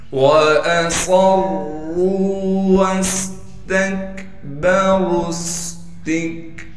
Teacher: रा पर दो ज़बर होने की वजह से रा को मोटा भी पढ़ेंगे और रा पर जब वक़फ़ करेंगे फिर रा को एक अलिफ की मिकदार खींचेंगे।